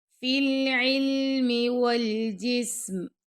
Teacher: اور جسم سین پر اب ہمس کریں گے